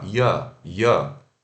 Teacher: o i rápido e o schwa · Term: unstressed